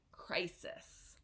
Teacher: with that I sound crisis it's like a smile um and so the stress is in cry